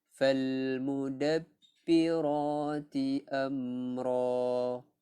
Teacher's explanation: alif lam qamariyah kita lafazkan alif lam dia